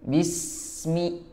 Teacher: Jangan lupa untuk melebarkan karena ini adalah huruf tarqiq yang tipis.